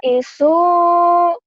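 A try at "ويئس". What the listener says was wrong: Waya is. Bukan, pendek semua. Sunya dong yang panjang. Waya isu. Waya isu.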